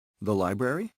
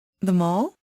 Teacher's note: when we want to confirm information, we can make the rising intonation. الآن لو بدي أكد على المعلومة بحاول أعلي نبرة الصوت شوية.